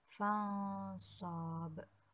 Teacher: Dinamakan ikhfa karena huruf nun sukun bertemu dengan huruf shad. Maka cara membacanya samar dengan sedikit dengung dan ditahan selama 3 harokat. Pada waktu pengucapan huruf nun mati, sikap lidah dan bibir dipersiapkan menempati huruf shad.